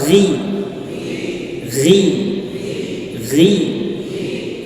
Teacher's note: Huruf ghain di mana tempat keluarnya? Di pangkal tenggorokan.